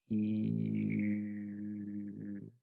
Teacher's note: okay i'm rounding i have my my mouth very closed and i have my tongue towards the front